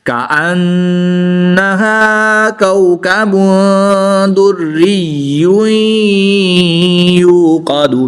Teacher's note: दो पेश की तनवीन के बाद या हरूफ यरमालून में से है तो यहाँ पर इदगाम माल गुन्ना होगा यानी गुन्ना करके पढ़ेंगे